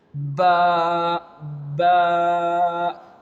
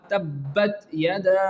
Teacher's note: The last example of this quality is of letter Ba. Which will pronounce from our both lips. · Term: strong letters